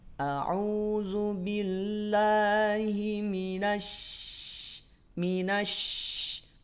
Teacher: Jim shin ya ada di tengah lidah, bukan di bibir. Makanya tidak perlu dimonyongkan.